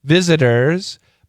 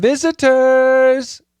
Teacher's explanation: normally we'd say visitors with a d like a flap T